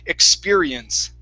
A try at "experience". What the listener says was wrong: Okay, force that tongue down instead of expedi.